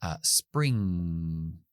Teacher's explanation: Y cuando hago es que tapo con la zona velar y hago, por ejemplo, spring. Ahí al final de la palabra, tapando atrás, sale por la nariz el sonido.